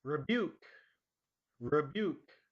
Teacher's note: the stress is on the second part